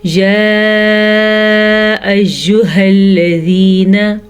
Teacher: 2 से 2.5 सेकंड तक इस मद को हम लंबा कर सकते हैं।